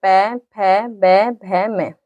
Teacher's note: हम ओठों से ही भरते हैं। दोनों ओठ आपस में स्पर्श होते हैं। बोला जाता है पै, फै बै भ मैं। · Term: ओष्ठ